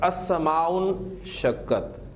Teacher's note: السماء حمزۃ الوصل ہے، ملا کر پڑھا جائے گا تو لکھنے میں رہے گا، پڑھنے میں نہیں آئے گا